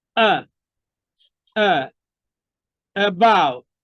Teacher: you articulate the sound from a resting position it is unstressed